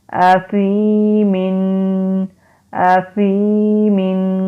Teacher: یا سے پہلے زیر آ گئی، حروف مدہ ہے، ایک الف کے برابر لمبا کریں گے